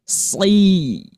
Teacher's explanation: ketika dalam keadaan kasroh, tebalnya jangan dikurangi